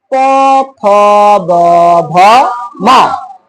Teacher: প, ফ, ব, ভ, ম। দুই ঠোঁট, শুধুমাত্র দুই ঠোঁটকে ব্যবহার করে এই ধ্বনিগুলো উচ্চারিত হচ্ছে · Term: ওষ্ঠ ধ্বনি